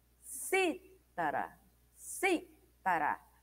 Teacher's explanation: A antepenúltima sílaba ela é a mais forte, né? É dita com maior intensidade. Então é uma palavra proparoxítona.